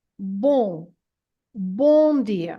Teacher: word b it has an an m at the end and this m at the end is not to be pronounced as a m sound as an M sound it's just there to make the nasal sound of the O